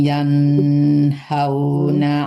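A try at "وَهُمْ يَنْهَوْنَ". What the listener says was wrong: tertahan. Wahum yanhaw, jangan terlalu lama di huruf yang nggak ada dengungnya ya, yanhaw.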